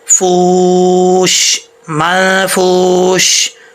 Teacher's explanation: یہاں پہ غنہ ہو رہا ہے تو منفوش نہیں پڑھیں گے، یہ واو ساکن ہے، فا واو پیش فو، مدہ ہے واو، تو لمبا کر کے پڑھیں گے